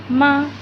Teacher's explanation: ہونٹوں کے باہر والے حصے کو ملا کر چھوڑیں گے خشک حصے کو تو ما ادا ہوتا ہے